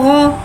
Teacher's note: गैन हुर्फ मुस्तआलिया है, लिहाजा इसके बाद हलक से मोटी अदा होगी। गैन के बाद ज़बर है, ज़बर को मुँह खोल के अदा करके पढ़ेंगे।